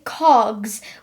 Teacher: we wouldn't say cogs we would say cogs with the sound Z at the end